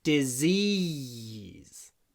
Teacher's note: в конце этого слова «si» произносится «з».